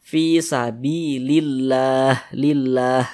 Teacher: kalau kita berhenti tepat di huruf H, kita baca fi sabilillah, lillah begitu. Huruf H-nya kita matikan.